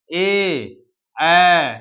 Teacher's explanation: यहाँ कंठ और तालु दोनों से मिलकर बना है ए और ए। अब कंठ ओष्ठ का बात करें तो कंठ और होठ मिलकर जहां बने हो, ओ, औ, तो इसको हम लोग कंठ ओष्ठ में रखेंगे। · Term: कंठ तालु